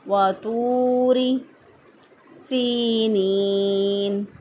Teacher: سین کے ادائیگی میں سیٹی جیسی آواز آنی چاہیے